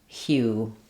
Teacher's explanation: letters HU say three sounds. They say the h, y, and u sounds. So I've rewritten that for you here with letters H, Y, and OO for hue.